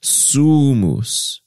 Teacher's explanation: The stress is on the first syllable. In the music, it has an epizema over the first.